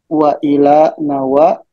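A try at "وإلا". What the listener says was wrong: Wa ila itu harfu jarrin. Ila harfu jarrin seperti ini. Kalau seperti ini tuh bukan ila tapi bacaannya adalah karena itu adalah in dan la. Berarti dibaca iya tasydid. Biar ada bedanya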